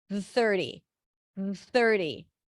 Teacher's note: It's almost like I'm pronouncing one long th with a short break in between.